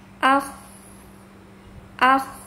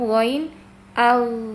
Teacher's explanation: Sedangkan gin ag ya tidak karena sifatnya jahr. Nah, kedua kedua huruf ini ya yang membedakannya itu Hames dengan jahr.